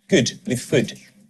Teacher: The narrator on the commercial is Scottish, so we hear good with food. They rhyme in his accent.